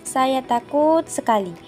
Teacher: Kita memberikan durasi yang lama pada kalimat takut, yang mana itu menggambarkan perasaan bahwa kita memiliki perasaan takut.